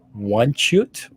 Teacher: the Polish L with that slash to it is more like a w sound